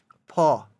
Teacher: ফ এটা উচ্চারণ করতে গেলে বায়ু প্রবাহটা একটু বেশি হয় যার জন্য এটা মহাপ্রাণ